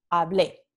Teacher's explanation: La vocal tónica está en la terminación.